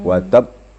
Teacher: Qalqalahnya maksimalkan lagi seperti yang pertama tadi ayat 1 watab ada getaran. Watab tasdidkan dulu kemudian timbulkan suara pantulan. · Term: qalqalah kubra